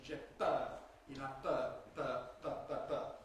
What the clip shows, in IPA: p˭œːʁ